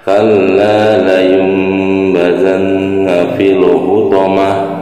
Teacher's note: Nah, ini ada tak marbutoh. Tak marbutoh disukunkan berubah menjadi huruf ha ya, ha besar.